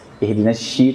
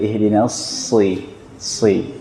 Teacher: Dasarnya sin tapi tebalkan, angkat pangkal lidah